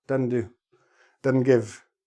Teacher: we just don't bother with the s it's an extra step an extra syllable that we just don't need